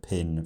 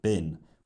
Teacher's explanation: the main difference between the two sounds in the pair is whether they’re voiced or not, and when the voicing starts · the larynx is doing the majority of the legwork in distinguishing the word ‘pin’ from the word ‘bin’